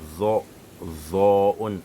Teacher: On met la langue sur les dents qui sont en haut, c'est-à-dire les incisives supérieures. Après avoir mis les dents en dessous des incisives supérieures, on gonfle avec la bouche.